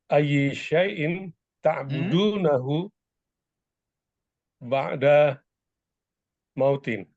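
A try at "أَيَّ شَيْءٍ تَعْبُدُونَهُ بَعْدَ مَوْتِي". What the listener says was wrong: Naam. Jayid.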